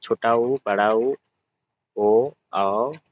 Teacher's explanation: कुछ स्वरों के उच्चारण में ओष्ठ वृत्तमुखी या गोलाकार होते हैं।